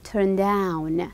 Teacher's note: The down is higher, or let's say it's more stressed.